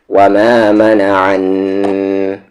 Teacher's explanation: وما، واو پہ زبر وا، میم کے ساتھ الف ما، وما، میم پہ زبر ما، نون پہ زبر نا، اور آ کو نام عن، وما منع، نون پر غنہ ہوگا۔ عین کا مخرج بیچ والا حلق، مڈل تھروٹ